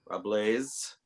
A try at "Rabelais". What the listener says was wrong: No, it's Rabelais. It's a silent S. Rabelais.